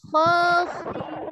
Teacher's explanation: Kalau dia di fathah bunyinya bukan kha tapi kho. Isti'la ya, endingnya o kalau di fathah.